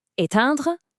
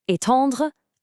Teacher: So, the only difference is the ending. For éteindre, your mouth stays in that flat, forced smile. But for étendre, you start with that same smile, but then you have to let your jaw drop open for the oh sound at the end. It's smile to smile versus smile to open.